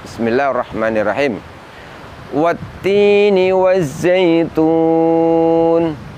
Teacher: lam sukun atau Al lam yang bertemu dengan huruf Syamsiah di mana alif lam tersebut tidak dibaca